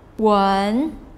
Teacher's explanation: the second tone the rising tone